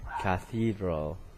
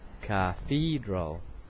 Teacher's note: the stress is in the second syllable